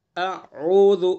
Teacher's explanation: بالکل حمزہ کو اور عین کو الگ الگ ادا کرنا ہے، صاف، حمزہ کو الگ، عین کو الگ۔